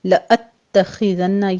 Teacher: خا پر پڑھا جائے گا، تا کو آپ نے موٹا نہیں کرنا۔ لأتخذن نون مشدد ہے، غنہ واجبہ کریں گے۔